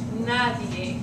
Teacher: that D is a fricative D with like a TH